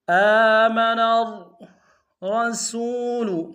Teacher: نون کو را کے ساتھ ملانا ہے، را کے اوپر تشدید زور دیں گے اور را کو موٹا ادا کریں